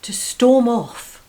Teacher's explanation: notice the stress is on the preposition off